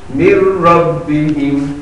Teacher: यहाँ नून नहीं पढ़ी जाएगी, रा पढ़ी जाएगी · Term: इदगाम